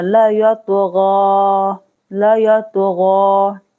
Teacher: गाइन पर खरा जबर है, साथ मद भी है, यहाँ पर खींचना है